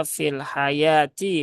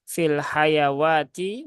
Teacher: wauya tidak dibaca maka cukup dibaca fil hayati bukan fil hayawati